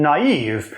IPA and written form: nɑiv (naïve)